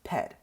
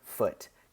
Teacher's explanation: the sound P changed to an F sound